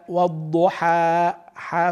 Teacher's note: فتح متوسط لا يزيد ولا يدخل عليه الواو